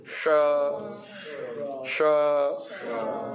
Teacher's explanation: तालव्य श पीछे जबान को खींच करके ऊपर हवा फेंको